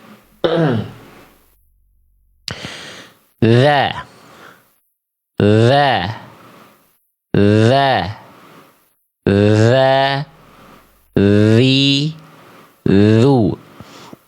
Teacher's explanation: Dia keluar dari ujung lidah disentuhkan ke ujung gigi sari atas. Ya, disentuhkannya secara tipis-tipis aja si ujung lidah ke ujung gigi sari atasnya tidak perlu ditekan kuat-kuat. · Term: huruf zal